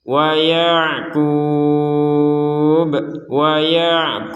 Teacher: Jadi di akhir katanya harus ada pantulan dari huruf ba.